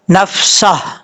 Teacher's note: اگر آپ رکیں گے تو پھر ہا کو ساکن کریں گے، کیسے؟ نفسہ، اس طریقے سے ہا کا ساؤنڈ آئے گا لازمی آخر میں۔